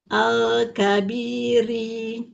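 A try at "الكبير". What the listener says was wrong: Rinya jangan panjang.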